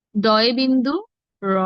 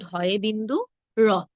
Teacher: অল্পপ্রাণেরটি আমরা কম জোর দিয়ে উচ্চারণ করব মহাপ্রাণেরটি আমরা বেশি জোর দিয়ে উচ্চারণ করবো